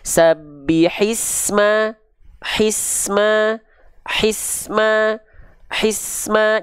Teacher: safirnya ini tidak terputus terus mengalir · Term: bunyi desisan